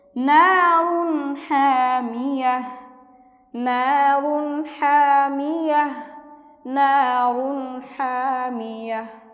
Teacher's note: তানবিনের বামে হা এসেছে, অর্থাৎ নুন সাকিনে ইজহার, আমরা গুন্নাহ ছাড়া স্পষ্ট করে তাড়াতাড়ি পড়ব